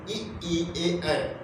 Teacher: अग्रस्वर किसे कहते हैं, जो जीभ के पहले हिस्से से बोली जाए, यानी आगे वाले हिस्से से बोली जाए, उसे हम कहते हैं अग्रस्वर।